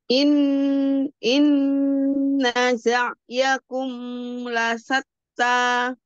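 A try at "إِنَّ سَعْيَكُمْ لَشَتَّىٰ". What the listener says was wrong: Sa, la, sa. Tebalan sedikit sa-nya. La, sa, sa. Sa. Tebal. La, sa, sa. Sa. Inna sa'yakum lasatta. Sa dengan sa beda. La, la dengan sya. Bahkan saya suka mana?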